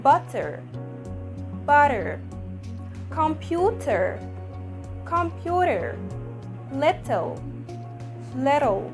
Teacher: this flat t is existed only in the american accent